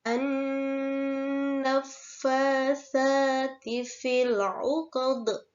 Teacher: Alif lamnya tidak dibaca dan dinamakan alif lam samsiyah · dibaca qad dengan huruf dal disukun serta memantul yang mana dinamakan qalqalah kubra